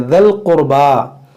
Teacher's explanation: ये दाल को लाम से मिलाएंगे